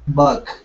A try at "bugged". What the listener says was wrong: Okay, give me a D sound at the end. Bugged.